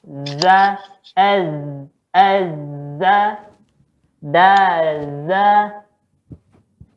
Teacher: Ujung lidah ketemu ujung gigi.